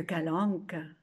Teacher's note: son premier A est ouvert en sourire